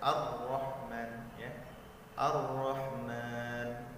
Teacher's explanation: getaran huruf ra tidak boleh melebihi dari 2 getaran. Tidak boleh melebihi ya, 2 saja itu sudah maksimalnya 2 lah kalau bisa. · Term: huruf yang bergetar